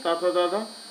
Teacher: ता था दाधा ये दंत्य है